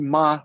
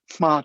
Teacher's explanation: In this language, Jordan recognizes the M causative prefix, but for M initial roots, he says, you don't get prefixation of the M. You instead devoice the initial M of the root.